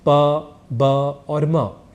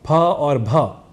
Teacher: यहां अल्पप्राण है प ब और म ये तीन अक्षर और यही फ और भ ये दो अक्षर महाप्राण इस नाम से जाने जाते हैं